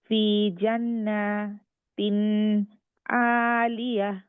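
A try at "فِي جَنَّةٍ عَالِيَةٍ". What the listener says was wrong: নুনে আর একটু সময় লাগবে, নুনে সাদ্দা আছে, আবার পড়েন।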